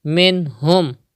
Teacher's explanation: Izhar will be done even in this word, because ha is from halkiya letters coming after noon sakin.